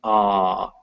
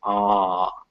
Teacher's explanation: this is in the back of the mouth and with your mouth open you can even feel your jaw go down as you say it